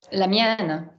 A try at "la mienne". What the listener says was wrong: Don't double accroche. Don't bounce. We're not 1940s Paris. We don't go la mienne. La mienne.